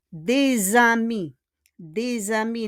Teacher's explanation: we pronounce it as Z if there's a continuation with the vowel. Des amis, fait en liaison.